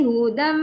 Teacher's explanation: so tanwin bertemu mim syaddah berdengung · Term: Idam maal gunnah